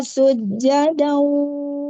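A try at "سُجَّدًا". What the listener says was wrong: Kata sujada, jimnya, tasydidnya disempurnakan. Sujada wa qulu hittatun naghfir lakum.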